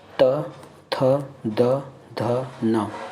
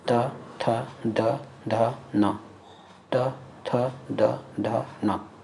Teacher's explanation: इस वर्णों को बोलने में आपका जीभ आपके दांत से टकरा रहा है। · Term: दंतोष्ठ